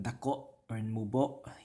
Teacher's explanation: Cebuano words that end with an o or an u will typically have glottal stops at the end, especially if they're the final vowel, like dako or mubo.